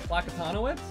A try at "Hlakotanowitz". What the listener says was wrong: Hlak. You gotta get the h. No, you do. You need to make it sound like you're trying to, like, just work.